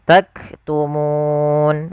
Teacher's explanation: di sini munya panjang dulu baru matikan. Nah, pada lafal bacaan nun ini ada boleh kita memanjangkan dua harakat, empat harakat atau en harakat. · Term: mad arid disukun